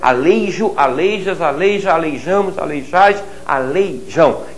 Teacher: não transforme o ditongo desses verbos em uma vogal